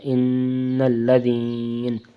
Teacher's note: وقفاً میں نون ساکن اور اس سے پہلے یا مدہ تو اس کو زیادہ کھینچ سکتے ہیں